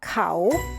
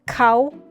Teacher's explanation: when I speak I use high tone cow and this is how I spell when I text my friends · But when I speak, I use high tone